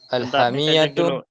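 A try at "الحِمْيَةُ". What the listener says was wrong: bukan alhamiyah, alhimyatu ya. Salah itu. Alhimyatu nafi'atun lil marda.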